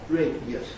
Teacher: change an /i/ into a /j/ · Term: compression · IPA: /ˋreɪdjəs/